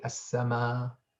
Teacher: in some words, we don't pronounce the Hamza at the end